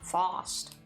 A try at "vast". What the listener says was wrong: Vast. It's a V.